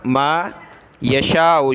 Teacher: شین پر مد ہے، اس کو ہم نے کھینچنا ہے